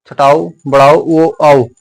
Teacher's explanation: आप बोलेंगे छोटा ऊ, बड़ा ऊ तो आपका मुख गोलाकार बनेगा।